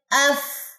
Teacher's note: اب ایک سانس بھی نکل رہی ہے، اندر سے گیس سانس نکل رہی ہے، کیونکہ یہ حروف محموسہ میں سے ہے، سانس والے حروف میں سے ہے، تو اس لیے یہاں سے سانس نکل رہی ہے۔